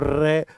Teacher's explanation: आपकी जीभ कंपन करने लगती है इसलिए हम इसको प्रकंपित व्यंजन बोल सकते हैं